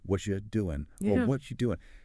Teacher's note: See how the t one blends with the R or you often becomes yah. It flows together.